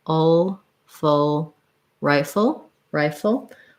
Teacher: I have this ri syllable that's long, and my full syllable is very short, almost no vowel in it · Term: syllabic L